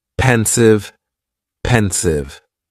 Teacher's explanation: Just 2 syllables, and the stress is on that first syllable